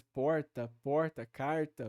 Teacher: em São Paulo há a possibilidade daquela realização não padrão do R retroflexo